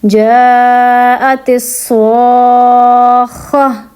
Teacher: اب جب ہم یہاں پہ کریں گے وقف تو ہم تا کو ہا میں کنورٹ کر دیں گے اور اس کو ساکن کر دیں گے